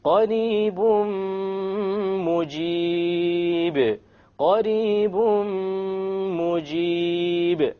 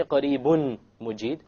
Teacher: We drop the end sound and we merge the tanween immediately onto the meme with a ghunna. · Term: idgham with ghunna